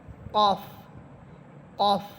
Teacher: জিহ্বার গোড়া উপরে তালুর সাথে লাগবে